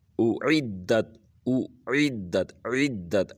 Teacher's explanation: حمزہ کو سادہ طرح اور جو عین ہے اس کو گلے سے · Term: عین کی آواز